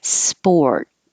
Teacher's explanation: immediately start rounding your lips to make the or sound and you don't release the t just hold it sport if it was plural then you will hear a little